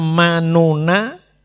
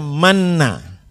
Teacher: Lah ini asalnya manuna, nuna dibaca manna, itu namanya idgham.